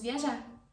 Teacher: I don't pronounce the R because it's the verb